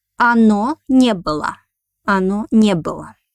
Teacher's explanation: The accent again falls on negative particle.